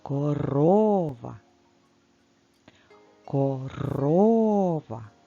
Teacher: дуже довго ми протягуємо звук О Після звуку р корова саме на другу букву о після звука р і падає наголос